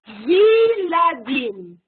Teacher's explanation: le schwa du début du mot, il tombe et ça devient Viladim